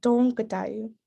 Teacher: the O with the little triangle on top is sort of an O, like almost a French nasal sound